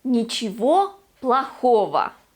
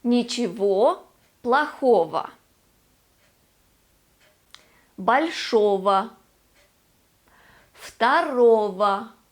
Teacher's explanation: In both these words, we have the ending go, which actually turns into vo when we pronounce it.